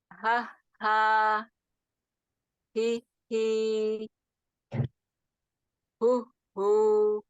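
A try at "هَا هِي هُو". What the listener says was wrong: Jangan diputus ya. Dia nyambung ya. Ya, dia tidak terputus suaranya. Ya, beda dengan hamzah tadi dia terputus ya. Nah, itu terputus.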